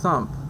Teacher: voiceless lingual dental fricative